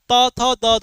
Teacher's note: त, थ, द, ध यानी ये निकलता है दंत से।